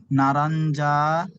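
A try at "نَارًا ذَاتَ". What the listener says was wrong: নারন যা বলছেন না, টান দিয়ে বলেন না রন জাতা। নুন আলিফ যাবার না, র দু যাবার রন। নারন হচ্ছে না, না টান দিয়ে পড়তে হবে। আলিফ মাদ্দা, ইয়া মাদ্দা, ও মাদ্দা একালি টান দিয়ে পড়তে হবে। আলিফ মাদ্দা এসেছে, একালি টান দিয়ে বলবেন না রন জাতা।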